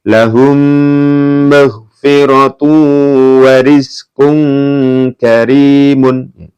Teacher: ini dibaca mendengung. Kenapa? Karena ada mim sukun bertemu dengan mim. Hukumnya idgham mimi.